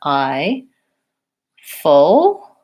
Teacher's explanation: Make sure that you're putting both the ah and the I sounds in there. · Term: I diphthong